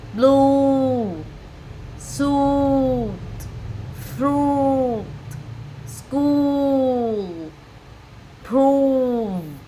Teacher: Bước 1, chu miệng hít cỡ về phía trước tạo thành một hình tròn nhỏ. Bước 2, vành môi có xu hướng úp vào trong không mở ra ngoài. Bước 3, độ dài âm gấp đôi âm u trong tiếng Việt. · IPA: /u:/